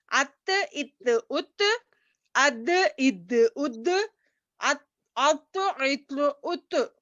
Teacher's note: یہ 3 حروف نتائیہ زبان کی نوک جب اوپر سامنے والے 2 دانتوں کی جڑ کے لگنے سے ادا ہوتے ہیں